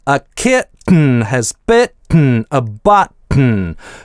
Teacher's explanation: Но чаще всего в таких сочетаниях /t/ глотализуется. Мы можем поднять язык в положение /t/, а потом, заперев ход воздуха, резко выдохнуть через нос - это носовой взрыв.